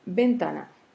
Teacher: c'est un mot qui porte l'accent tonique sur la deuxième syllabe, c'est-à-dire l'avant-dernière syllabe, ta. Donc, on classe les mots comme paroxytone.